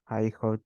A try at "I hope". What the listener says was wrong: But be careful with the pronunciation of this because I heard I hot. Esto escuché yo. I hot. It is I hope. I hope to be in another country in 10 years.